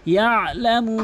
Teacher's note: এখানে আইনের উচ্চারণ হলকের মাঝখান থেকে করতে হবে।